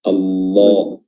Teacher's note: Ketebalannya itu didapatkan dari lidah ya, bagian belakang pangkalnya itu terangkat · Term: Lafzul jalalah